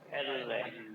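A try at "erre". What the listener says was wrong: এর রে, ননে এর রে, এরকম না, এর রে, একটা র সাউন্ড আছে, এর রে।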